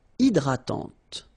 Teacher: don't insist on the final E, and this is nasal.